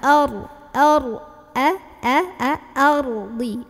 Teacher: A-nya ikut jadi kayak mau bilang o, tebal. A, a, ya buka.